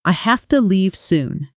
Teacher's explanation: have to, when it means obligation, often reduces its V sound almost completely in fast speech, blending toward hafta.